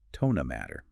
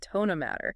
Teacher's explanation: That T sound in not can kind of soften or blend.